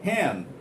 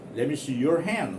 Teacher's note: if D occurs after n then this D is also very softly pronounced